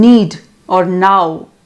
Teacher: the voiced alveolar nasal n is realized in spelling as n as in need or now